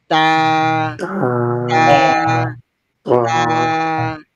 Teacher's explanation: উপরের দাঁতের এইযে এটা দাঁত দাঁতের গোড়াতে দিয়ে স্পর্শ করবে তা প্রথমে একটু ধাক্কা হবে প্রথমে লেগে যাবে তারপর ছুটে যাবে